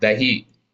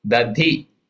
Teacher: खंदिशो न for anuswara, खंदिशो भूर्महो दधिः, भूर दीर्घ उकार अलंतर महो दधि, not dadi and not dahi, meaning is dahi but dadhi, alpa prana da, then mahaprana dha, dadhi short e visarga, महो दधिः.